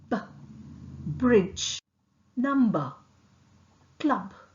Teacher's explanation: B is articulated with 2 lips. The upper and lower lips are closed firmly. Vocal cord vibrates.